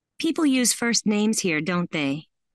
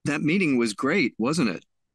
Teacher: falling intonation usually indicates that the speaker expects the listener to agree